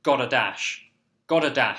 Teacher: it's almost like a soft D sound for the gada